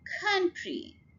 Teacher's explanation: Could, 1 syllable word. Country, two-syllable word and stress is on the first syllable